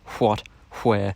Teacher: You'll notice that the what, where kind of sounds similar to fwat and fware because there's a certain amount of friction happening at the lips. And what's happened in these dialects of Scots is that the articulation, instead of just being kind of at the lips, has switched to being completely at the lips. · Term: labial friction